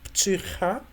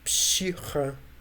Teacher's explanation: Ch in standard Adige and sh in Abzakh dialect · In Abzakh, it's pshicha. So ch became sh.